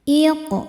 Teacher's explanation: Karena qof sukunnya sukun asli dan ada di tengah-tengah bacaan. Cara membacanya dipantulkan qofnya ini dengan pantulan yang kecil. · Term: qalqalah sugro